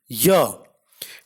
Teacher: Ya is a voiced palatal approximant.